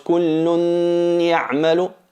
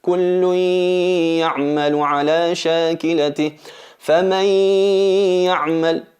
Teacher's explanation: Hay que fusionar la nun en el ya. No se nota el sonido del nun, pero sí está la característica de la nasalización.